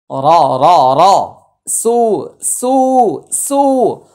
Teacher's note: রটা মোটা হবে, সুটা একালিফ টান।